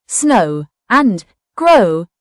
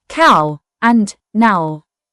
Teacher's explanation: OW can make the long O sound as in snow and grow, or the diphthong as in cow and now.